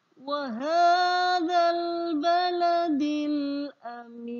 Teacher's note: Ada al bertemu dengan huruf ba. Huruf ba itu termasuk huruf idhar qamariyah, maka alnya terbaca.